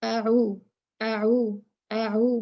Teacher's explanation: कुछ लोग पढ़ते हैं आऊदु, आऊ, आ भी उतना खींचते हैं, ऊ भी उतना खींचते हैं, जो कि गलत है। अ एक काउंट है, ऊ दो काउंट्स हैं। ऊ मद असली है क्योंकि वाव जो है वो साकिन आया है पेश के बाद ऊ, और ये हमजा जो है ये अलिफ ये अकेला है, इसके पास कोई वजह नहीं है खींचने की।